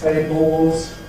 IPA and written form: ˈteɪbɫz (tables)